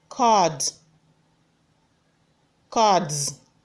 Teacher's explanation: Here, the s is realized as z, which is voiced.